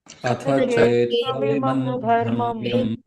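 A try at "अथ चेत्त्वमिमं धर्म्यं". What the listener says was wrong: Dharmyam, not dharma, dharmyam.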